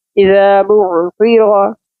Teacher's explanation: रा के ऊपर ज़बर है इसलिए इसको हम मोटा पढ़ेंगे